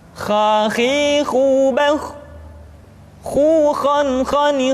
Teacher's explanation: Kha dikeluarkan dari pangkal tenggorokan. Kha, pangkal tenggorokan. Diucapkan dengan mengalir nafas. Atau lebih praktisnya, pengucapan huruf kha persis terdengar seperti orang yang tidur dalam keadaan mengorok.